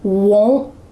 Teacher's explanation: There's still a stopped T happening